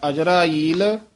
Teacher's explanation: ਅਜਰਾ ਤੇ ਈਲ ਦੇ ਵਿੱਚ ਡੈਸ਼ ਦੇ ਕੇ ਲਮਕਾ ਕੇ ਬੋਲਣਾ